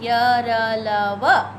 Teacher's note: जीभ जो है, मुंह के विभिन्न पार्ट्स को पूरा नहीं छूती है, हल्का हल्का छूती है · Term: अंतस्थ व्यंजन